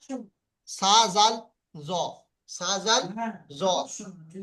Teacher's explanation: জিহ্বার আগা এবং সামনের উপরের দুই দাঁতের আগার সাথে লাগিয়ে উচ্চারিত হয়